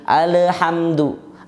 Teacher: lamnya mantul. Kok jadi qalqalah padahal huruf lam bukan huruf qalqalah